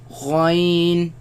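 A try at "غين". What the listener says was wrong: Again, the ya sound. Do not produce the nasal sound.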